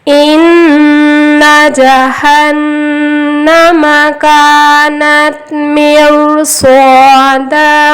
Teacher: روائے ساکن سے پہلے زیر ہے، لیکن روائے ساکن کے بعد حرف مستعلیہ صاد آیا ہے، اس لیے رو کو موٹا پڑھیں گے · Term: روائے ساکن موٹا